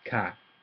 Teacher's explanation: Falling, but short, so it sounds almost like it's low.